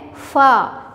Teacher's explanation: सनाया उलिया का सिरा यानी दांतों का जो सिरा है वो, और नीचे के होंठ का हिस्सा फा, देखिए ऊपर के दांत हमारे होंठों पे टकरा रहे हैं।